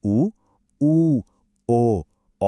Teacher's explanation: जब हम उ ओ औ बोलते हैं तो हमारे होंठ गोल यानी एक वृत्त जैसे हो जाते हैं। इसलिए यह वृत्ताकार कहलाते हैं।